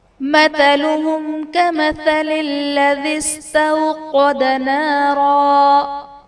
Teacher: مثلهم میں میم ساکن کے بعد حرف با اور میم کے علاوہ کاف ہے، تو یہاں پر اظہار شفوی کا قاعدہ ہوگا، یعنی میم ساکن میں ہم غنہ نہیں کریں گے